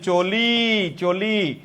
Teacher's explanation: এই শব্দের শেষে স্বরবর্ণ উচ্চারিত হচ্ছে। স্বরবর্ণ উচ্চারিত হলে তাকে বলে মুক্তাক্ষর।